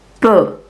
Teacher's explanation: Option A, Peu, is a closed U sound. That means our mouth should be more closed when we pronounce it.